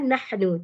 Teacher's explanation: Hamas bermaksud angin ya. Letak tapak tangan depan mulut. Masa kita baca nah, terasa angin.